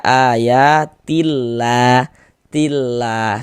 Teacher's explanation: huruf lam jalalahnya itu kita baca tarkik. Kita baca tipis. Sehingga ini kita baca ayatillah, tillah seperti itu.